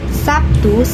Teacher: dalam kata Sabtu diucapkan sebagai P